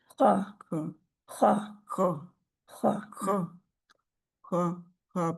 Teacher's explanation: ख मोटा भी है और पीछे से हलक का आखरी हिस्सा जो है मुंह की जानिब उधर से आता है